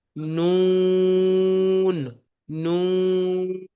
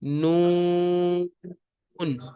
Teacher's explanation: প্রথম দন্তের নটি টান দেবেন, দ্বিতীয় দন্তের ন এসে আওয়াজ থেমে যাবে। এখানে অনেকে ভুল করে নুন বলে আওয়াজকে নাকের মধ্যে চেপে ধরে।